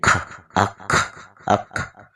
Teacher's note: صفت ہمس کی وجہ سے آواز رک گئی اور سانس جاری رہا